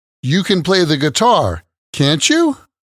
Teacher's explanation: you can use a tag question like this with Rising intonation